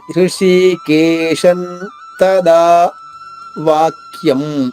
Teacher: షా తర్వాత ఉన్న అనుస్వరాన్ని నా అనే అక్షరంతో ఉచ్చరించాలి. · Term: అనుస్వర ఉచ్చారణ